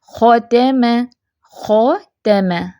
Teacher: خ فیٹ ہے، تا اور میم جو ہیں یہ باریک ہیں، لائٹ لیٹر ہیں، ان کو ساتھ میں موٹا نہیں کرنا۔ ایک تو زیادہ لمبا نہیں زبر کو کھینچ دینا، خ تا ما ایسے بھی نہیں پڑھنا، خ کو پر رکھیں، مخرج کو ذہن میں رکھتے ہوئے خ کو ادا کریں، ختم ختم، ٹھیک ہے۔